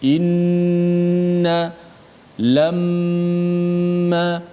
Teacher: caranya kita panjangkan sedikit gunnah itu, sekira-kiranya 2 harakat dan juga mengikut tempo kadar kelajuan bacaan kita. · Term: gunnah yang sempurna